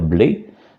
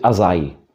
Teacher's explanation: Alors, sur cette île, ils ont une particularité phonétique, c'est que ce qui correspond à E sur la côte se prononce aïe sur l'île de Groix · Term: diphtongue typique